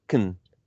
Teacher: We go straight from k to n, and we used what's called a syllabic consonant sound. A syllabic consonant sound is shown by this symbol at the bottom.